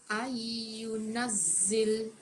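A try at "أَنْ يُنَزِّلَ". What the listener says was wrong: Dengungkan sikit ni, dia punya nun dengan ya ni. Sekali lagi, ai, macam gitu. Biar dua harakat. Ai, gitu.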